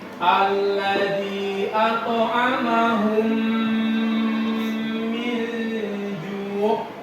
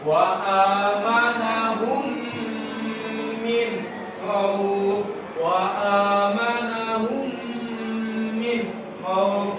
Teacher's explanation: suara mim sukun itu jelas berdengung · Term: idgham mutamasilain